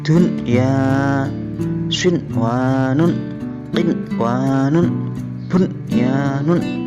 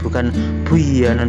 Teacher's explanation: Nah, ini dibaca dengan jelas nunnya, tidak diidghamkan ke dalam huruf ya atau wawu. Dun ya, nunnya dibaca jelas. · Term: izhar